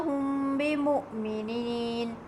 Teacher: In hum bimu'minin, the Meem Sakin is followed by ba, so you hide the Meem lightly with a soft nasal sound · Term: Ikhfa-e-Shafawi